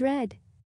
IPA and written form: red (Red)